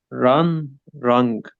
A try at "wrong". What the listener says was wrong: يعني wrong. ايوه كده، ما تعملش ستريس على الان، طالما في ج خلي الان خفيفه خفيفه. wrong wrong.